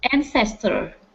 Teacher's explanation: so our stress is at the very beginning